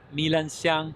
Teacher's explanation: Milan means honey orchid, and it is a falling tone and a rising tone.